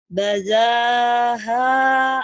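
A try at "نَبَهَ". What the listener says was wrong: bukan baza, itu nun kan ngambung bana.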